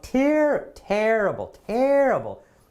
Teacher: the stress is right at the beginning of the word